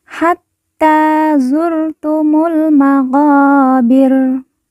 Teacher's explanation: Hatta ta yang bertasjid kita baca ditekan ditahan dua harakat kemudian ta kita baca panjang dua harakat karena di atasnya terdapat Alif kecil kemudian mu langsung masuk huruf lam alif tidak dibaca Hatta zurtumul